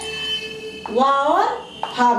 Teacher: वा और फा, इसको क्या बोला जाता है, वा और फा को दंतोष्ठ है, क्योंकि ये जो है आपका जो है इसमें भी है और इसको दंतोष्ठ है, दांत और ओठ से बोला भी जाता है कि इसको वा और फा को ये दोनों से बोला जाता है, दांत और ओठ से। नीचे का ओठ ऊपर के दांतों को स्पर्श करता है